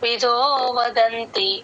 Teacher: విదో దగ్గర కొంచెం పైకి లేపాలి